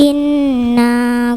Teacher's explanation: gunnah musyaddadah nun tasdid dengan 3 harokat.